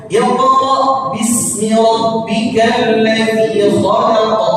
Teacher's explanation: alladzi di sini dia mad asli 2 harokat. Jangan dibaca lebih dari 2 harokat. Jangan dibaca begini.